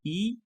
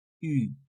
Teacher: You pout your lips from the I sound to the U sound, and then you have the right sound